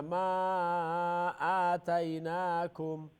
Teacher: ما کو لمبا کرنا، یہ مدہ جائز منفصل